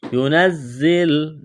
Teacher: زا میں سیٹی کی آواز پیدا کریں گے